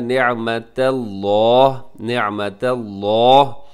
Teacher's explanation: لفظ اللہ کو موٹا کیجیے گا کیونکہ اس سے پہلے تا کے اوپر زبر ہے، لیکن تا کو باریک رکھیے گا، ایسا نہ ہو کہ نعمت اللہ ایسے آپ پڑھیں اور تا بھی ساتھ مفت میں وہ بھی موٹا ہو جائے۔